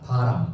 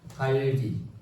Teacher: 왜냐면은 흐름 소리인 리을, 그러니까 유음인 리을과 모음 사이에 있기 때문에 영향을 받아서 성대가 진동을 해요